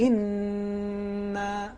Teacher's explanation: انا میں تشدید ہے نون پر جی لہٰذا حتماً ہمارے لیے ضروری ہے کہ ہم اس نون کو کھینچیں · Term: غنّے کا کھینچنا